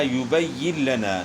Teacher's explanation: اس طرح یبین لنا، نون ساکن کے بعد حروف جر ملون میں سے لام ہے، تو یہاں نون ساکن کا لام میں ادغام ہوا بلا غنہ، یعنی غنے کے بغیر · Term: ادغام بلا غنہ